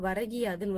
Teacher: முதல் சொல்லின் இறுதியில் உள்ள கூ என்னும் எழுத்து கீ என்று ஒலிக்கிறது. அதுவும் முழுமையாக ஒரு மாத்திரை அளவில் ஒலிக்காமல் அரை மாத்திரையாக ஒலிக்கிறது. இந்த மாதிரி தன்னோட ஒரு மாத்திரையில இருந்து குறைஞ்சி அரை மாத்திரையாக ஒலிக்கிறது தான் குற்றியல் லிகரம்.